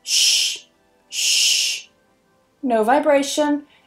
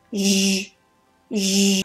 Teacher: If you're not sure, you're not convinced, then compare it to its voiced partner, sh, sh. So I know for a fact that sh is voiceless or unvoiced.